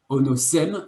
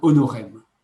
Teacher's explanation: tous les S intervocaliques deviennent des R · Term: rotacisme